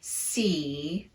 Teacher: tongue are this is not a relaxed tongue position at all the tongue is very tense on that e · the vowel is naturally elongated a bit because there's no other sound after it